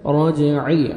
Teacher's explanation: جیم حروف قلقلہ میں سے ڈبل ساؤنڈ آئے گا